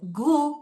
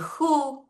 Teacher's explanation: el gu, que está nasalizado, el ju, que está fricativizado